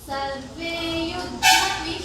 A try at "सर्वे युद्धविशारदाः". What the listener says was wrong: Very good.